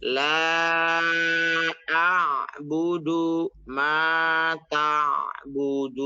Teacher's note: lanya itu karena panjang jadi bukan la a ya nanti bacanya